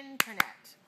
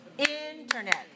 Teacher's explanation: 3, stress, 1. All right, stress on the first syllable now